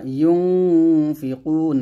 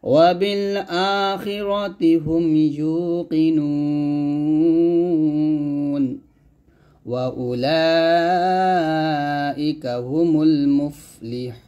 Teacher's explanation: যদি মদের হরফের পরের হরফে আমরা থামি তাহলে সেই মাদে 3 আলিফ টান দিয়ে পরের হরফে সাকিন করতে হয় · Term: ওয়াকফ অবস্থায়